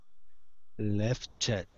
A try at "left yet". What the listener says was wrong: Don't exaggerate the ch too much. It's not that strong. But that's it.